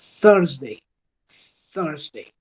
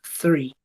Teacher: Ese símbolo es el símbolo zeta, ¿sí? Y ese sonido se hace dejando fluir el aire a través de mi lengua y los dientes superiores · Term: el sonido TH